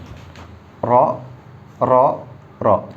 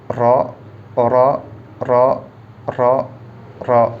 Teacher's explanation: Awal punggung ujung lidah berada di posisi gusi atas untuk huruf ro.